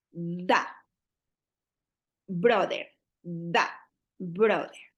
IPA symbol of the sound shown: ð